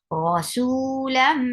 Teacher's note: This is idgham with gunna. You are keeping your sound in your nose. You are merging the sound of the mim into mim.